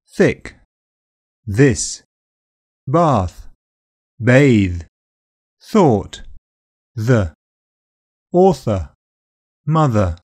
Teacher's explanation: For both sounds, the tongue touches behind the top teeth. Air squeezes through, so they're called dental fricatives. You can make the same sound pushing your tongue out between the teeth, but it takes too long, so keep it inside. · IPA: /θ/ and /ð/